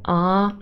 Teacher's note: just a monophthong a long vowel sound it's only a nucleus it's an open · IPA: /ɑː/